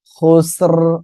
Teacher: আমরা অকফ করলে কি হবে এখানে র টা সাকিন হয়ে যাবে